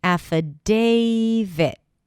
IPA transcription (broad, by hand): æfəˈdeɪvɪt